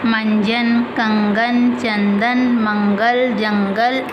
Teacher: नेसल्स इनका उच्चारण नाक से होता है